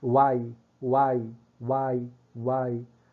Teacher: vê que o A, ele tem a preponderância, tem a força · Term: vogal tônica